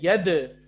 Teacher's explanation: सर दाल पर कलकला है।